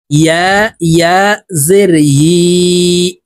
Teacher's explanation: ইয়ার উচ্চারণ জিহ্বার মধ্যখান থেকে হবে, কারণ ইয়ার মাখরাজ জিহ্বার মধ্যখান থেকে।